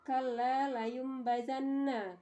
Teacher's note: Jika ada nun sukun atau tanwin bertemu dengan huruf iklab maka suara nun diubah menjadi mim